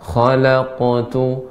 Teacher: Ya, qafnya lebih tebal lagi, Ibu. Qalqalahnya lebih tebal karena qaf ini merupakan huruf yang isti'la